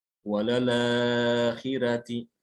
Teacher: ra-nya fathah tapi dia dibaca tipis. Ya, itu pada riwayat Warsh.